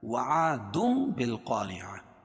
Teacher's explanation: تنوین کے بعد با ہے تو تنوین کو میم سے بدل کر غنہ اور اخفا کے ساتھ پڑھنے کو اقلاب بولتے ہیں۔ عاد بالقارعة، الف سے پہلے زبر ہے تو الف مدہ، رعا را باریک ہوگی کیونکہ را کے نیچے زیر ہے، اور گولتا کو وقفہ کی حالت میں ہائے ساکنہ سے بدل دیں گے۔